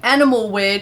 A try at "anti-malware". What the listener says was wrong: anti-malware, not animal.